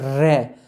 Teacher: जब बोलेंगे हम रे तो जीभ कंपित होती है, यानी जीभ में कंपन होता है, तो इसे हम कहते हैं परकंपित व्यंजन।